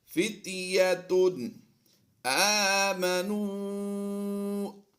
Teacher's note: تنوین کے بعد حروف حلقی میں سے حمزہ آ گیا تو یہاں پر ہم اظہار کرتے ہوئے پڑھیں گے، یعنی غنہ نہیں کرنا